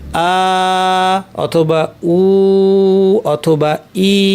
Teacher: এই মাদ্যের হরফের মাখরাজ হচ্ছে আল জাউফ। অর্থাৎ মুখ এবং কন্ঠ শূন্যস্থান।